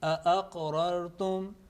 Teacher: The third letter is Qaf, and Qaf with Sukoon is a letter of Qalqala. A soft jerk is needed.